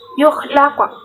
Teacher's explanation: Lam yukhlaq, mim sukun bertemu dengan ya, hukum bacaan idhar syafawi. Yukhlaq, qaf sukun merupakan hukum bacaan qalqalah sugro karena terdapat di tengah kalimat